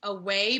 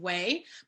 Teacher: the deletion of a initial or medial unstressed syllable. So it could be a whole syllable.